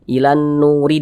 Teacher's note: Ilan Nuri dan seterusnya karena kita tidak berhenti di huruf ro maka huruf r-nya ini dibaca tarkik Dibaca tipis dibaca tipis huruf rnya